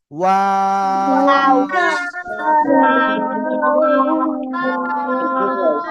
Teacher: দুই ঠোঁট গোল করিয়া তিন আলিফ টানিয়া অ অক্ষরটা উচ্চারণ হয়, এভাবে বলতে হবে। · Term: ওয়াও অক্ষরটা